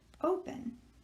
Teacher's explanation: so we are accenting the first syllable